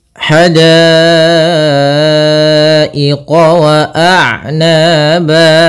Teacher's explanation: ha kecil halus dari tengah tenggorokan kita · Pada dasarnya da ketika awalnya da ketemu alif 2 harokat, karena datang setelahnya huruf hamzah pada satu kata, maka menjadi 4 harokat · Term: mad wajib muttasil